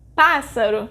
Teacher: Pássaro is a proparoxítona because its sílaba tônica is pá, the third to last.